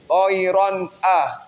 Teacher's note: Idhar halqi. Karena tanwin bertemu dengan huruf idhar yaitu hamzah.